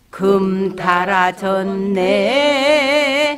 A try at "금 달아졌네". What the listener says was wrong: 아니. 금 달아졌네. 전. 올라가잖아요. 금 달아졌네.